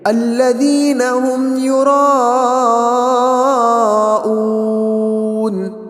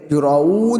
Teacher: یراؤون کے اندر جو ہے مد متصل ہے، تو اس کو ہم 3 الف 4 الف تک کھینچیں گے۔ الذین هم یراؤون، اس طریقے سے یراؤون، وہاں پر اون کے اندر واو مدہ ہے، ہم اس کو صحیح سے ادا کریں گے، ہونٹ گول ہوں گے، دیکھیں گے وہاں پر یراؤون، اون ایسا نہیں بلکہ یراؤون۔